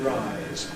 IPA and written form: raɪz (rise)